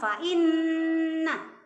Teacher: Iya, hukumnya gunnah. Ya, nun tasydidnya hukumnya gunnah. Jadi dibaca berdengung